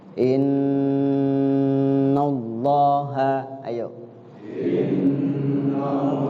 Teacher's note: Cara bacanya digunnahkan di huruf nun.